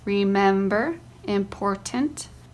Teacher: in the words remember and important the second syllable is accented